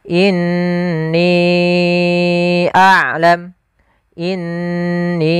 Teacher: Di sini ada hukum tajwid berupa mad jaiz munfasil, yaitu kita panjangkan 4 atau 5 harakat